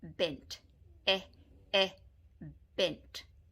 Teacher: when saying the e sound the tongue is relaxed in the mouth except slightly raised at the back and the lips are also relaxed and the jaw drops slightly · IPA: /e/